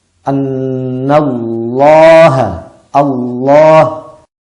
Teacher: Sebetulnya huruf a, tapi langit-langitnya terangkat. Itulah yang dimaksud dengan tafkhim.